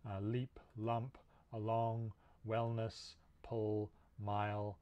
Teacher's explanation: the air is actually going around the sides of the tongue instead of over the middle while you say it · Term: lateral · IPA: /l/